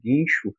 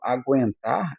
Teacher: Precisei de um guincho. Guincho, esse G e U eu pronuncio num som só, né? Quando eu falo aguentar, eu pronuncio G e U.